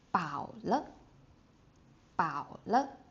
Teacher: the third tone plus a neutral tone